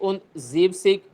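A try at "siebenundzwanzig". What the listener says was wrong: यहां पे जीप जीबन पूरा आएगा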